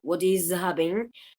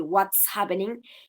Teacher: esa voiced alveolar fricative de is pasa a ser la voiceless alveolar fricative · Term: Phonemic Progressive Assimilation of Voice